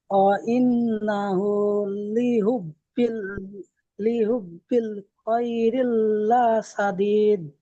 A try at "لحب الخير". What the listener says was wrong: খায়রিল হচ্ছে কেন? খায়রি, রজের রি হবে। হুম, ওয়া ইন্নাহু লিহুব্বিল খায়রি লাশাদীদ।